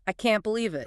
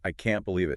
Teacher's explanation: You wouldn't say, I cannot believe it with equal stress. You'd hit, can't.